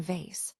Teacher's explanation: On the other hand, is a voiced labiodental fricative, where the top teeth gently touch the bottom lip, creating a friction sound, as in vase